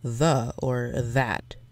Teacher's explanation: the voice dental fricative is the th sound in the or that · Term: voiced dental fricative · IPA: ð